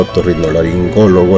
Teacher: la palabra otorrinolaringólogo la sílaba tónica es la antepenúltima es una palabra esdrújula